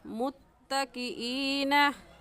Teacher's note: या मद्दा को हम एक अलिफ के बराबर खींच कर पढ़ते हैं